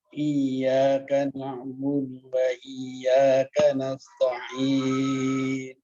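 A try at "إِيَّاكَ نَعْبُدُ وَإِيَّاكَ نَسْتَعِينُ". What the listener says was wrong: Tanya diringankan lagi Pak. Kanasta'in. Tanya ringan ya. Kanasta'in.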